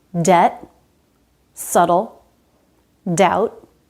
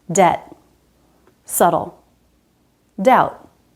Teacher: No B sound in any of these words.